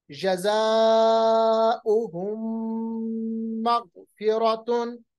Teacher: इसके बाद एक और मिसाल, जज़ाउहुम मग़फ़िरतुन, मीम साकिन के बाद मीम, इदगाम, हुम ऐसे पढ़ेंगे, होंठों को बिल्कुल बंद करेंगे, फिर मीम को मीम के साथ मिलाएंगे